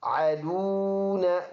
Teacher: واو مدہ ہے، ایک الف کے اندازے سے لمبا ادا کریں گے